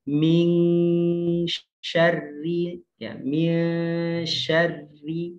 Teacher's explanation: Min syarri itu namanya ikhfa, maka harus ditahan.